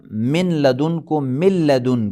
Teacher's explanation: قرآن کریم میں نہ پڑھا جانے والا صامت لام نون قاف، لام کا را میں ادغام ہونا، جیسے آپ بتائیں قر ربی، نون ساکن کا لام میں ادغام ہو جانا، من لدن کو مل لدن کا پڑھیں گے